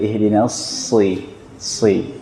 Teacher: Jadi dasarnya sa bukan ke sya. Ihdinas shi tidak, ihdinas si. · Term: sin